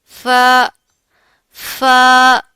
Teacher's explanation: जब ऊपर वाले दो दांतों के किनारे नीचे वाले होंठ के तर हिस्से से लगेंगे तो फा अदा होगा।